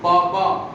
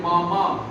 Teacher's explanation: जब आप बाबा बोलेंगे तो फूंक निकलती है, और जब हम मामा बोलते हैं तो फूंक नहीं निकलती